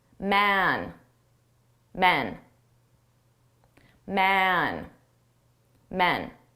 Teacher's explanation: So we have a long sound on the singular and a short sound on the plural.